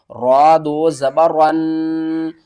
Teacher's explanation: را کے اوپر جب 2 زبر آئیں گی را پور پڑھا جائے گا، یعنی موٹا کر کے ہم پڑھیں گے